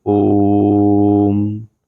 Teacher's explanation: जो ओ स्वर है उसके मात्रा काल तीन मात्रा काल है · और देख लेते हैं जैसे ओम, जब हम ओम का उच्चारण करते हैं ओम, तो ओ जो स्वर है, यहाँ पर जो ओ स्वर है उसका मात्रा काल 3 मात्रा काल है, जिसे हम प्लुत स्वर कहते हैं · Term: प्लस स्वर